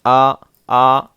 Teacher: اور زبر کی آواز اوپر کو اٹھتی ہے